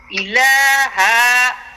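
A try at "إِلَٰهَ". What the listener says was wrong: ইলাহা। হায়ের মধ্যে টান দিছেন কেন? হায়ে কি টান আছে? ইলাহা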